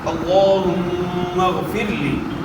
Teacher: یہاں بھی جو ہے نا اللہم کلام جو ہے موٹا ادا ہوگا، اس سے پہلے زبر ہے، اور میم مشدد میں جو ہے غنہ ہوگا